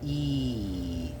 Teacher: When you do an E sound, it's like your tongue goes to the top of your mouth, but it opens up So you do not connect them.